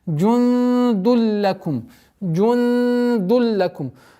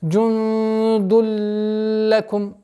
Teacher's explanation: после ассимиляции назализации отсутствует у букв лям и ра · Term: ассимиляцию без назализации